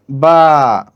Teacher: বা বলার সময় আমাদেরকে বা এর শেষের দিকে এক আলিফ পরিমাণ টানতে হবে